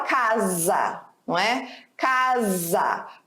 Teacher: O som de um S entre duas vogais fica com som de Z.